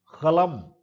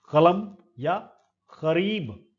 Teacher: okay, finally यूवुलर, active articulator is the back of the tongue, passive articulator is uvula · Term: यूवुलर साउंड्स